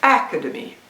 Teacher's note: It's a 4-syllable word, and then I say put the stress on the first syllable